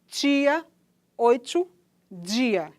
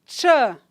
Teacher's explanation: Quando eu digo ch, para dizer tia, observe que há uma mistura entre as oclusivas e as fricativas, porque há uma obstrução que é inicial e depois uma soltura por completo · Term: africada